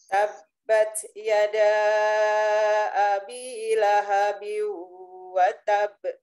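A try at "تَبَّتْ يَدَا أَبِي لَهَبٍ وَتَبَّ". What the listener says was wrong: Wa tab agak terlambat.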